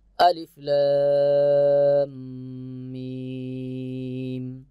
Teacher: হরফের মধ্যে তাসদিদ যুক্ত সাকিন আসিলে তাকে মদ্দে লাজিম হরফি মুসাক্কাল বলে ইহা চার আলিফ টানিয়া পড়িতে হয়